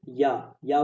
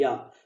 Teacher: या बोलो तो आपका जीभ हल्का सा तालु में टच होता है